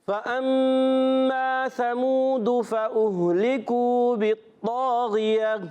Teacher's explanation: میم مشدد غنہ کرنا ہے